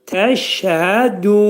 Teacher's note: Du, məddi ariz olacaq. 4 hərəkət miqdarında uzadılacaq.